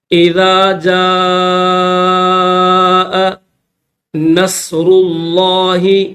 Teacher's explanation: الف کے اوپر بڑی مد ہے تو 5 الف کی لمٹ میں اس کو کھینچا جائے گا۔ جیم الف مد زبر جا، حمزہ زبر ا۔